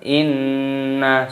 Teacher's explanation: nun tasdid hukumnya dibaca gunnah, artinya berdengung. Cara membacanya yaitu didengungkan.